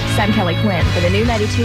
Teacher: my voice just like fries out at the end for some reason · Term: vocal fry